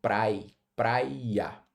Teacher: esse I, ele é uma semivogal, ele é fraquinho, justamente porque ele perde força estando ao lado do A que o antecede